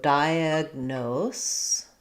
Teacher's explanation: We have the S sound at the end, and we're stressing on that last syllable, nose. So we have a clear no, O diphthong.